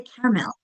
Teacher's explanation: In caramel, there technically is three syllables, but we usually say caramel. We skip that middle syllable. At least with my Long Island accent, we do.